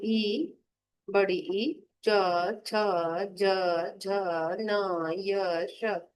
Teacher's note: फिर है तालु को छू कर जो बोलने वाले स्वर हैं, जैसे ई, बड़ी ई, च, छ, ज, झ, न, य, श। जब आप बोलकर देखेंगे तो ये तालु का स्पर्श इसमें होता है।